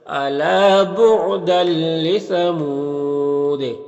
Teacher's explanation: یہاں پر تنوین کے بعد لام ہے حروف یرملون میں سے، تو تنوین کو لام سے ملا کر بغیر غنہ کے پڑھیں گے، اس کو ادغام تام کہتے ہیں۔